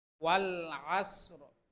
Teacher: শেষে এই র এর উচ্চারণ করতে হবে হালকাভাবে